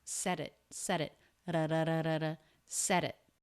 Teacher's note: D between vowels sounds just like the T between vowels, a flap of the tongue.